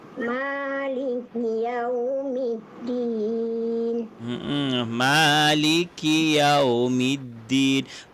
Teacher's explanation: Ma pastikan panjang Ma kerana dia dua harakat.